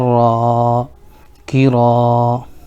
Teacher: زیر کی آواز نیچے کو جاتی ہے جیسے کاف زیر کی. الف سے پہلے را کے اوپر زبر ہے اس لیے الف مدہ ہوگا, ان کو تھوڑا کھینچ کر پڑھیں